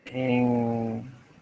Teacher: Because the N next to a G or a K changes into ng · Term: velarization